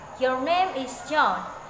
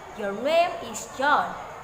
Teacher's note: beginning with a medium pitch and ending with a lower one, namely, that is falling intonation.